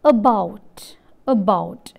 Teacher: the lips are unrounded hence this vowel is known as a central unrounded vowel between half open and half close